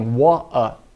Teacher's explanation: Então a gente já comeu o R e comemos o T também